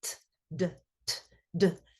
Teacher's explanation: So for example, earlier we talked about D and T and how D is voiced and the vocal folds move during the production of D, and T is unvoiced, but they're both produced in the same place in the mouth.